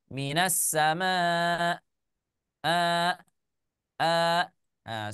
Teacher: tidak mengalir suaranya jadi kalau hamzahnya kita sukunkan dia langsung Cut suaranya